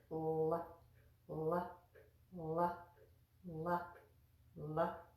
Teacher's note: made by touching the tongue at the front teeth and then just drawing it back